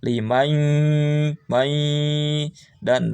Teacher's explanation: Tekan, dengungkan, artinya dengungkan itu suara masuk ke pangkal hidung. Limai dan nunnya dihilangkan.